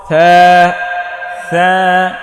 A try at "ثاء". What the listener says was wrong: নরম হবে জিহ্বার আগা সামনের উপরের দুই দাঁতের আগায় লাগিয়ে। হ্যাঁ, এটা সা সা কোনো ক্রমেই হবে না। এই যে বায়ের মতো একটা টান দিয়ে এনে নিচে নোক্তা দিলে বা, ওপরে দুই নোক্তা দিলে তা, সিম মাথার মধ্যে উপরে তিন নোক্তা দিলে থা থা থা থা